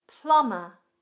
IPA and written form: plʌmə (Plumber)